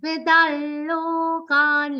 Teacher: Da has an anuswar which will be pronounced like a nasal la consonant. Vidalokan. Lo is a long sound, ka is a long sound, it's followed by a half na sound.